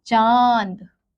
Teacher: उच्चारण करते समय ध्वनि नाक और गले दोनों से निकलती है